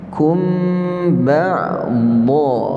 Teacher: Dhad itu tebal dan kita berhenti dengan satu baris sahaja.